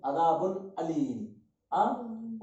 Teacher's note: नाक में आवाज नहीं गई